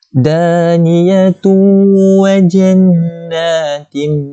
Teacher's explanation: Daniyatu, ni tanwin. Ni tanwin bertemu dengan huruf waw. Jadi kita kena dengung 2 harakat. Sebab apa? Dia akan jadi idgham bi ghunnah.